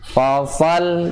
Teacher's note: Ingat ada sifat hamasnya bas, ya, dan sifat sofir, ya, sifat sofir yang suara seperti burung